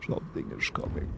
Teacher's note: You gotta have like a really low vocal fry to do that one.